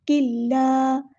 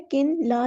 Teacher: इदगाम कामिल, नून की आवाज़ बिल्कुल नहीं आएगी